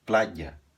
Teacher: se diz plaia aqui esse Y tem o som de consoante você faz um I pressionando a língua no céu da boca e depois solta outra vogal